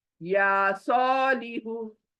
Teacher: या खींचा, सौ खींचा, लिहु जल्दी